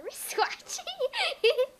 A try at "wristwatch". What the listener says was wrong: One more time, because it sounded like he said watch.